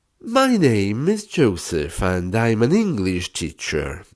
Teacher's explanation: up down up down with every word or part of the phrase and as you come to an end bring your voice down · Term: intonation